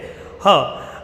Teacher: કંઠ એટલે કે ગળું. હનો જ્યારે આપણે ઉચ્ચાર કરીએ છીએ તો એ ગળામાંથી થાય છે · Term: કંઠ્ય